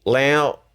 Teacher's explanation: Lao is high tone and Lao is a little nasally